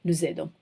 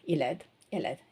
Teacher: So you're supposed to be giving the sound z, nous aidons. Whereas elle aide, il aide don't have the sound z, but you're still doing a liaison, il aide, elle aide, okay?